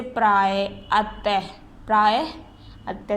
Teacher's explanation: विसर्ग का उच्चारण हा के समान होता है। इसका उच्चारण यानी इसका बोलने के लिए हा के तरीके से होता है, जैसे हा मिला हुआ होता है।